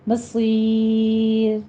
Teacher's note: یا مدہ کے بعد آپ نے جب وقف کرنے لگے ہیں تو را بھی باریک ہو جائے گی، مصیر، را موٹی نہیں پڑیں گے، پھر باریک ہو جائے گی، مدارس وقفی کر لیں گے، 6 کاؤنٹ کرنا ہے۔